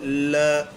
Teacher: ऐसा लगता है जैसे वायु जीभ के साइड से होकर के गुजर गई हो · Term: पार्श्विक व्यंजन